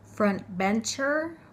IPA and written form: ˌfrʌntˈbentʃər (frontbencher)